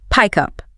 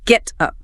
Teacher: To sound native, you eliminate the pause. You drag the consonant across the gap and attach it to the vowel. Say it as one continuous fluid word, pick up. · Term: consonant vowel linking